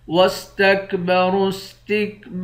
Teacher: را کو موٹا پڑھیں گے، با کے بعد الف ہے، اس الف کو بھی ایک الف کی مقدار کھینچیں گے۔